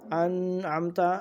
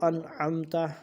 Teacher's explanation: ہم، یعنی بہت زیادہ دیر ہم نے ناک کے بانسے میں، ناک کے اندر نہیں آواز کو لے جانا، بلکہ اپنی اصلی حالت میں اس کو نون کو پڑھیں گے